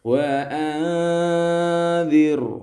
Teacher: huruf dzal di sini lithawiyatun, tha dzal dha, ujung lidah menempel ujung gigi seri atas